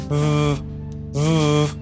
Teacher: the labiodental fricative [v]